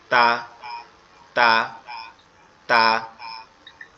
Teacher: জিহ্বার আগা সামনের উপরের দুই দাঁতের গোড়ার সঙ্গে লাগবে। জিহ্বার আগা সামনের উপরের দুই দাঁতের গোড়ার সঙ্গে লাগবে, লেগে উচ্চারিত হবে এরকম ভাবে তা তা তা।